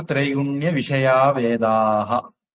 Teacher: திரைகுண்ய விஷயாக அந்த விசர்க்கம் மறைஞ்சிரும். அப்ப திரைகுண்ய விஷயா வேதாக, வேதாக விசர்க்கம் நம்ம உச்சரிப்போம்.